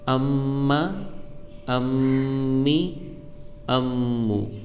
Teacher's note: میم میں بھی ایک الف کے برابر کھینچ کر ناک میں گنہ ہو کر پڑھا جائے گا